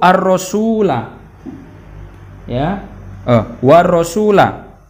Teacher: maka alif lamnya seakan-akan hilang dan yang terbaca adalah ro-nya, ya, dibaca seakan-akan bertasydid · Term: idgham syamsiyah